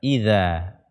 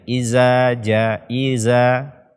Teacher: makhraj dzal ini ujung lidah bersentuhan dengan ujung gigi seri atas kita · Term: huruf dzal